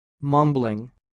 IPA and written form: ˈmʌm.bəl.ɪŋ (mumbling)